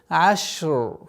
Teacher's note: У звука шин есть тафаши, произношение продолговатостью.